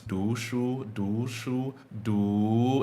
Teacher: second tone is really long and rising compared to the other tones